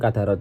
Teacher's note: huruf dal dibaca memantul ringan karena sukun di tengah kata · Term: qalqalah syugro